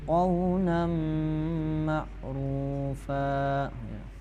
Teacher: karena di situ ada mim tasdid, maka membacanya tuh harus dengungnya itu selama 3 ketukan.